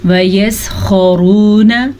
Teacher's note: خا کے مخرج کو پر کر کے پڑھنا ہے. خا ہمیشہ ہی پر پڑھا جاتا ہے. را کو پر کر کے پڑھنا ہے کیونکہ را پہ پیش ہے اور یہ واو مدہ ہے، اسے ہم نے کھینچ کے پڑھنا ہے.